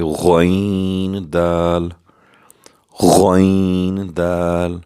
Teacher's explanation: خا کی طرح یہ بھی پر کر کے پورے قرآن میں پڑھا جائے گا ، جیسے غین دال، غین دال۔ نیکسٹ پھر خا نقطے والا